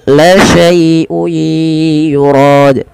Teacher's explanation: lembutkan dalam melafalkan ya sukun yang di dalam dengan fathah karena dia ada bacaan lin, lembut di dalam melafalkannya.